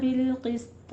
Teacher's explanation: سین درمیان میں صاد نہیں بننے چاہیے، سین کو باریک ہی رکھنا ہے، قاف کو پر پڑھنا ہے، طا کو پر پڑھنا ہے